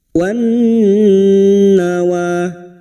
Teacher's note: Masuk pada huruf nun dan mendengung selama 3 harokat. Wan nawa. Wa alif kecil di atas 2 harokat mat tabi'i.